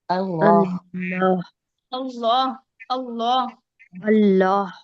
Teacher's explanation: زبان بلند ہو جاتی ہے لفظ اللہ کو پر پڑھنے میں